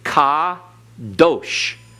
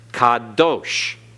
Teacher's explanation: Accent on last syllable, because in Hebrew, the accent is on the last syllable unless otherwise indicated.